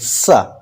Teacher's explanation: स बोलने के लिए हमारी जीव दांत से स्पर्श किए बिना दांत के नजदीक पहुंच कर के स बोलेंगे पतली सी हवा निकलेगी · तो इसको उच्चारण करने के लिए हम क्या करेंगे कि जिस प्रकार हम ता बोलते हैं, तो ता बोलने के लिए हमारी जो जीभ का अगला हिस्सा है वह दांत से स्पर्श करता है, ता थ द ध ना। तो सा बोलने के लिए हमारी जीभ दांत से स्पर्श किए बिना दांत के नजदीक पहुंच करके सा बोलेंगे, पतली सी हवा निकलेगी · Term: दंती सकार